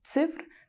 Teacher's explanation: Ең алғашқы дыбыс ц дауыссыз қатаң, и дауысты жіңішке, ф дауыссыз қатаң, р дауыссыз үнді екен.